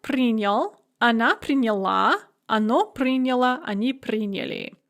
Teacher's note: So, on принял, она приняла, оно приняло, они приняли. The stress is on the ending in the feminine form and on the first syllable in the other forms, but never on the ya where it is in the infinitive. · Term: shifting stress